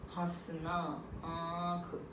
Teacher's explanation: ठीक है। अनुनासिक बोलते हैं ना इसको, चंद्रबिंदु को, ये नाक और मुंह से बोला जाता है।